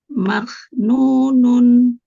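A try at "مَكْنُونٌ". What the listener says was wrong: nah, mak. Jangan dilepasin makrotnya, renggangin sedikit aja sambil dialirkan nafasnya ke depan. Mak. Enggak yang tadi. Mak. Ya, tahan dulu sebentar di makrotnya, di makrot huruf kaf. Maknunun. Maknunun. Nun, jangan ngerem, tanwin.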